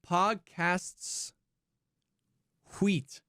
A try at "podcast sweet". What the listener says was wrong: Well, you put the wrong emphasis on the wrong syllable,